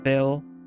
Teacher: the Dutch V is quite interesting it sounds very f-like